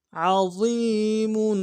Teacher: میم کے اوپر تنوین غنہ کریں گے، وقت میں میم کو ساکن کریں گے